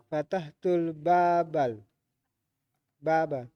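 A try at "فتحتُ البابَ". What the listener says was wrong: Kenapa jadi bal-bal itu? Fatahtu. Atau fatahtu al-baba.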